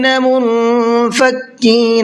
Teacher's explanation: منفکین نون کے اندر اخفا کریں گے اس لیے کہ نون ساکن کے بعد میں فا ہے